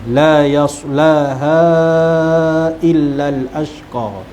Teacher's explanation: al ashqa tu alif lam qamariyah dan qa mad asli, 2 harakat · ada huruf mad kemudian bertemu dengan hamzah dalam dua kalimah yang berlainan. Kat situ mad jaiz munfasil, dibaca dengan 4 ataupun 5 harakat